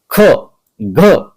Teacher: में अल्प प्राण और द्वितीय और चतुर्थ वर्ण इन्ह बोलने में हमें ख घ अधिक शक्ति लग रही है इसलिए हम इसे बोलते हैं महाप्राण